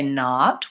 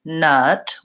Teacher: they might be trying to say not with an open aw and it sounds more like nut with a closed sound